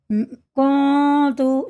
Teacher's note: زبان ہمارے منہ میں کہیں نہیں لگتی اور ناک میں سب آ جاتی ہے · یہ نون ناک میں ہی جا کے پڑھا جاتا ہے 1 الف کے برابر ۔ کنت، جب اسے ہم پڑھتے ہیں نا، زبان ہمارے منہ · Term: اخفا